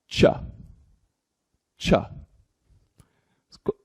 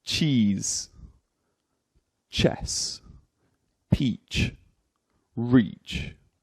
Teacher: air is briefly prevented from leaving the vocal tract, as the tongue presses against your teeth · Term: ch noise